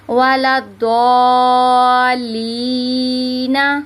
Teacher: تو جب ہم اس کو ساکن کریں گے تو یہ مدے، کیونکہ یہ یا مدہ کے بعد ہو رہا ہے، یہ دیکھیں یا مدہ ہو رہا ہے، یا مدہ کے بعد وقف ہو رہا ہے، تو ہم اس کو کھینچتے ہوئے رکیں گے